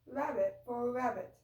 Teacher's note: the R sounds are replaced most commonly with W sounds